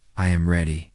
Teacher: The voice falls naturally at the end.